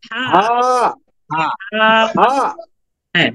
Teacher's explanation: আঙ্গুল দিন দেখুন যে এই জায়গাটা থেকে আওয়াজটা বের হয় কিনা আ গলার মাঝখান থেকে হাঁ